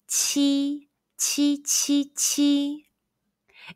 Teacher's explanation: letter q in pinging the pronunciation is chi chi chi chi it's like the ch in the english word cheese but with a stronger puff of breath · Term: qi sound